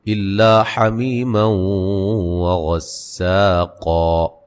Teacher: نون تنوین کا یہاں ادغام مع الغنہ ہے · وغسا غین کو موٹا ادا کریں گے، سین کو باریک پڑھیں گے